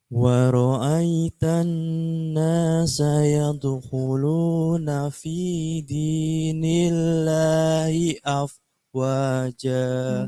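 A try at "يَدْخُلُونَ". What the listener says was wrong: Bagus, tapi kho-nya kurang ngorok. Yadkhulu, kho. Kho. Kho. Gitu ngorok lagi.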